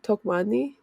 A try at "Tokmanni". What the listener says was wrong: So you overpronunciate the first part, so it's talk. But you like overpronunciate the first like two letters.